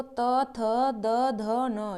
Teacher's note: हमारी जीभ दांत से स्पर्श करती है तो यह दंत कहलाते हैं